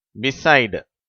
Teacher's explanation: இ என்ற எழுத்து இன் என்றே உச்சரிக்கப்படுகிறது அதாவது குறில் ஈ அப்படிங்கிற உச்சரிப்பில் உச்சரிக்கப்படுகிறது